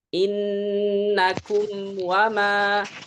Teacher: sempurnanya mim atau garis miring izharnya mim adalah dengan sukunnya ditandai dengan dua bibir yang dirapatkan.